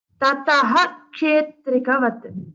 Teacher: when ksha comes after a visarga, two dots, then you have to say tataha.